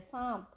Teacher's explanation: अनुनासिक ध्वनि हो रही है। नाक का भी इसमें प्रयोग हो रहा है, यानी गले के साथ साथ नाक का भी प्रयोग यहाँ हो रहा है।